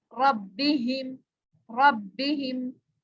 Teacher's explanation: शद वाला हर्फ पे हम रुक के पढ़ते हैं जरा उस पे और सख्ती करते हैं, तो आपने भी इसी तरह से करना है।